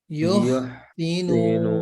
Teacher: Jadi jangan yuh sinun, tapi alirkan suaranya.